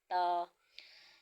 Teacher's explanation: जबान की नोक और ऊपर के दांतों की जड़ से अदा होगा